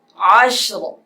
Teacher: عین شین زبر عش را دو زیر رین عش رین عش رین وقف عشر. وقف میں را موٹی ہو جائے گی. جب اس کے ہجے کریں گے رواں پڑھیں گے تو را کے نیچے زیر ہیں اس لیے باریک پڑھیں گے.